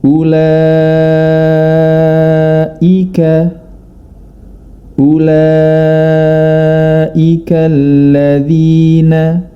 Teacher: Kemudian kita dapati beberapa mad wajib muttasil, yang mana diantaranya terdapat di kata ulaika, ulaika alladzina. Mad wajib muttasil boleh dibaca 4 atau 5 harokat, yakni dengan catatan kita harus disiplin dan konsisten dalam membaca panjang mad tersebut.